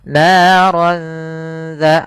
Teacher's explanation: langsung ke huruf dalalnya sambil ditahan dengan gunah Kemudian pada lafal dza hati-hati jangan terbaca dengan za lahab dengan huruf zai karena di sini huruf dzal. · Maka kalau ini disamarkan. Naran dza langsung ke huruf dzalnya sambil ditahan dengan gunnah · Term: ikhfa